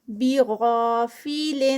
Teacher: وَمَاللَّهُ پھر میم اللہ سے پہلے زبر تو یہاں پر ہیوی ہوگا اور 2 counts کا اسٹریچ. بِغَافِلٍ غا غین ہیوی اور ساتھ میں 2 counts کھڑی زبر